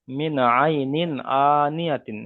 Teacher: তার নুন সাকিনের পরে হুরুফে হালকির 6টি অক্ষরের মধ্যে থেকে আইন এসেছে, তাই নুন সাকিনকে বিনা গণ্যায় জাহির করে পড়তে হবে, একে ইজহার বলা হয়। তারপরে আইনের উপরে জাবার এসছে, জাবারটি হলো হারাকাত, হারাকাতের পরাকে তাড়াতাড়ি পড়তে টান দেওয়া হয়েছে।